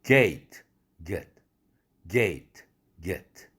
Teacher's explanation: 이완음 get 이거보다 gate 할 때 애가 긴장됐기 때문에 더 길어진 것입니다. 그래서 장모음이 된 것이죠. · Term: 긴장음